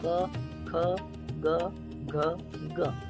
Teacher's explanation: अब सपोज है तो बोल के देखो और गले के पास हाथ रखो और बोलो क, ख, ग, घ, ग, आपको वाइब्रेशन फील होगा गले में। तो जो भी कोई व्यक्ति ये 5 वर्ड बोलता है तो आवाज जो है वो गले से आती है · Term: कंठ्य वर्ण